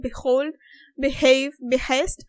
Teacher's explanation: H is a realized voiced glottal fricative.